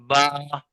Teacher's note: दोनों होंठ के तरी वाले हिस्से को मिलाने से बा अदा होगा